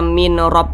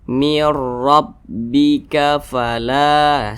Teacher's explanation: tapi langsung dimasukkan ke huruf r mirabbika Fala nah seperti itu jangan didengungkan jangan ditahan suaranya Jangan dipanjangkan pendek saja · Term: idgham bila ghunah